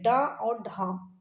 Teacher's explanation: जीभ निकाल के देख लीजिए। एक झटके के साथ नीचे गिरता है। उनको उत्क्षिप्त व्यंजन कहते हैं। इनकी संख्या दो होती है।